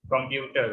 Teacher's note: in the word computer, the stress is on the second syllable